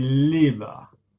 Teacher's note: Par contre, notre fiston qui a 4 ans maintenant, il a encore des difficultés à produire ce son-là et en fait, il fait un peu comme les Asiatiques, il change son R pour un L, donc il dit liba